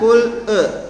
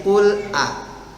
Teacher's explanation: Bunyi A dibuka secara sempurna, tapi tidak masuk ke huruf A, jadi tidak terdengar tebal.